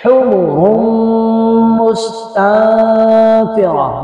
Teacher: حا کو حلق سے ادا کریں گے حمر مستنفرہ، سین پر سیٹی کی آواز آئے گی تنفرہ، اس کو دوبارہ کلوز کیجئے گا اور دیکھیے گا تنفرہ مستنفرہ۔